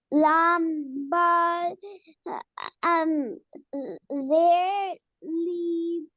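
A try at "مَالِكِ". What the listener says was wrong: It is kaf, okay? Kaf, zer ki, maliki, waqfan. Malik. So this is kaf.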